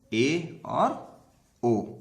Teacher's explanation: अर्ध संवृत स्वर में मुख द्वार कम संकरा होता है। संवृत में अधिक संकरा होता है, लेकिन अर्ध संवृत में कम संकरा होता है।